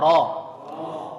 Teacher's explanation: Nah, ra, perhatikan kalau ra fathah itu harus tebal ya. Ra, terangkat pangkalnya. Pangkal harus nangkat. Jadi jangan ra, bara'a, ra, tapi ra.